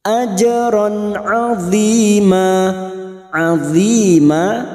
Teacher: fathah tanwin dibaca jelas tanpa mendengung